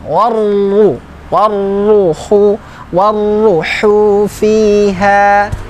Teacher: Ra tasydid tafhim. Ra yang bertasydid kemudian dibaca tebal.